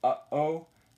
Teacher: that sudden stop of air in between the vowels is your glottal stop. So what you're actually, it's called the glottal stop because what you're doing is you're completely cutting off the airflow at your glottis.